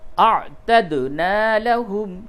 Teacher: حمزہ عین زبر پہلے حمزہ کی آواز نکلے گی پھر عین کی آواز